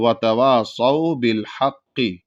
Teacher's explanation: پوری تشدید بھی ادا ہونی چاہیے اور بڑا قاف بھی ادا ہونا چاہیے